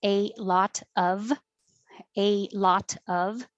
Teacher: you don't have to say the v in of it just sounds like uh